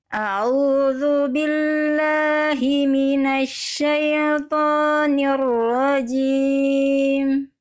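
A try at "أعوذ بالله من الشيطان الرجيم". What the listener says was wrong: Baik. Bagus Bunda. Lanjut. Sudah lebih baik.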